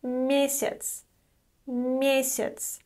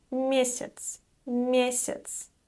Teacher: Note that the letter Я is pronounced as И here.